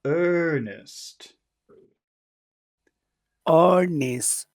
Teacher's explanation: It depends on who you're talking to, but it would be better if you made that vowel sound much longer because of the R.